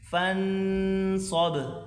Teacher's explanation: آخر میں با ظاہر کریں، قلقلہ کریں